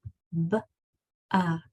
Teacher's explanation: it's hard to stretch out a B sound because it's very quick